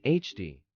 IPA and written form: ˈhændi (handy)